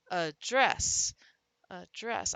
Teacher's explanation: the non-stressed syllable can become the schwa sound